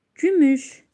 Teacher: Gümüş incə saitlər iştirak etmişdir və saitlərimiz dodaqlanandır. İncə dodaqlanan saitlərdir.